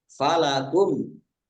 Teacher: Mim sukun bertemu dengan huruf alif, bacaan izhar safawi, dibaca jelas